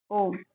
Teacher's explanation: प्लुत स्वर जिनके उच्चारण में दो मात्रा से अधिक का समय लगता है उसे प्लुत स्वर कहते हैं।